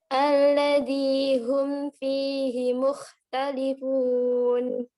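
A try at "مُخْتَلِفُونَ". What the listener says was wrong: Nah, wawunya jangan ke hidung. Mukhtalifun.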